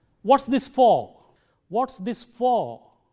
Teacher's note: on but one thing we have to keep in mind is both auxilary verbs as well as prepositions when they occur in the final position of the sentence they are said with the strong form at the end of the sentence it is not the weak